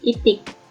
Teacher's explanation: I dengan bunyi depan tinggi tak bulat